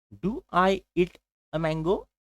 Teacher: So there is one increased pitch at the end of that question.